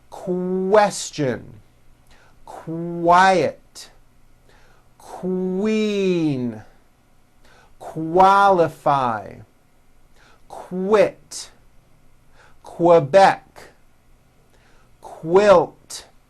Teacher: not have known that so for example the word Qui is pronounced with a k and a strong W sound · How are Q sounds related? Well, Q sounds are made with the K sound, k, k, and the W sound, w, put together.